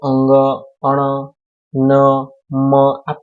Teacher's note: હવા મુખ પથ અને નાસિકા પથ બંને માંથી પસાર થઈને બોલાય